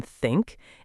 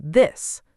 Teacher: English actually has 2 TH sounds, voiceless, like in think, and voiced, like in this.